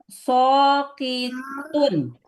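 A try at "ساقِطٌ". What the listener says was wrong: Jadi bukan so ya. Sa, bukan so.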